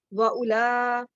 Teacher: حمزہ کے اوپر پیش ہے، ہونٹوں کو گول کر کے پڑھیں گے او